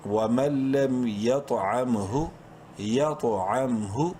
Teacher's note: طا کو بولڈ کریں گے، بولڈ لیٹرز میں سے ہے اور قلقلہ کریں گے طا میں